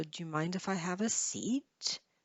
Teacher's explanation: so here the seat it goes down and then up · Seat is the last stressed syllable. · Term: rising intonation